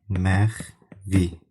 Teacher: ikinci hissəsindəki f cingiltili qarşılığı yenə v-ya çevrilir